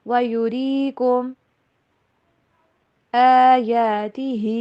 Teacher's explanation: کم کے اوپر غنہ نہیں کرنا